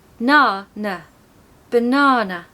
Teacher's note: because we can hear na when we listen to that word all I can really hear is Na and that's because of the magic of the schwa it allows that na sound to shine out